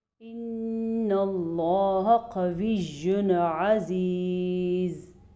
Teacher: اللہ کے نام کو ہم نے پر پڑھنا ہے کیونکہ اللہ کے نام سے پہلے حرف پہ زبر ہے. نون کا غنہ ہم نے ضرور ادا کرنا ہے کیونکہ جب کبھی قرآن مجید میں نون کے اوپر شاد آ جائے یا میم کے اوپر شاد آ جائے تو غنہ ادا کرنا ضروری ہے.